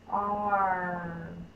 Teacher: I'm starting off with ah, and then I'm sliding it to the R sound. That is an R controlled vowel.